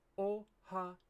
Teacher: mistake that English speakers make when they're writing the word oh we seem to want to put an e sound between ha and yo and it really doesn't need one it should be oh Hao oh you often hear the E